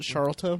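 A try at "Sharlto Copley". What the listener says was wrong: You like mix the L and the T.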